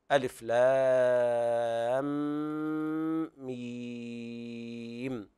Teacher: ثم يأتي بعدها ميم، وهنا الميم الأخيرة ساكنة وقبلها ياء مادية ساكنة، فاجتمع ساكنان أيضا نتخلص من التقاء الساكنين بإطالة الصوت ست حركات · الألف ليس فيها مد لأن ليس وسطها حرف مد. لام هجاؤها على ثلاثة أحرف وسطها حرف مد، وجاء بعدها ساكن صحيح أصلي في الوصل والوقف، فيمد الألف ست حركات للتخلص من التقاء الساكنين. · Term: مد لازم حرفي, مد لازم حرفي مثقل